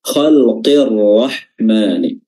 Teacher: lamnya ini dilangkahi dihapus dan langsung masuk ke huruf Ra dengan tasdid khalqirahman dan huruf rnya di sini dibaca tafim dibaca tebal karena · Namun karena dia agak berat penyebutannya bagi orang Arab, lam sukun bertemu dengan huruf ra di sini, maka lamnya ini dilangkahi, dihapus, dan langsung masuk ke huruf ra dengan tasydid